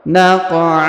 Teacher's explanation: di bawahnya faatarna bihi naqa huruf qo berharakat sukun naqa kemudian tanwin an kita panjangkan dua harakat